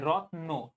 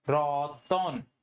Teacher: এখানে কিন্তু একটা অ এর উচ্চারণ চলে আসতেছে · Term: মধ্যসরাগম